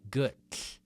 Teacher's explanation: Gull, the double L's is one of the hardest pronunciations in Icelandic, at least for Americans, for English speakers. You want to have the tongue hitting the back of your top front teeth and air is coming out the side of your mouth.